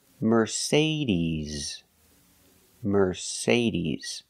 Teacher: The final sound is not s like star, it's z like zebra.